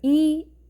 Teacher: 이 제대로 발음한다면 입천장과 혀가 꽤 가깝게 닿으면서 발음될 거예요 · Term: 고모음